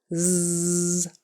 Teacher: So it's made in the same place as S, with your tongue right behind your teeth. S, nice and skinny, only you turn on your voice so it tickles. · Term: Z sound